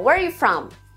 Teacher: O are praticamente some. Fica praticamente só where you from na fala contínua.